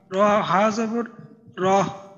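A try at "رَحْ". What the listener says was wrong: এই হায়ের উচ্চারণটা কিন্তু আরো গলার মাঝে একটু চাপ দিয়ে বলতে হবে, হলকের মধ্যখান থেকে। রহ, রহ, এইভাবে।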